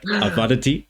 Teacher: the verb starts with an ein, but in modern Hebrew they don't pronounce the ein